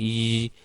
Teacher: the front part of the tongue is raised towards the palate but it is it is not too close to the roof · You will notice that while producing y sound, y, if you just notice it carefully and produce the sound y, so you will notice that the front part of the tongue is raised toward the palate, but it is not too close to the roof of the mouth to produce a fricative sound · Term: approximant